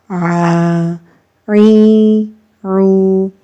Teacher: عین جو ہے یہ وسط حلق سے ادا ہوتی ہے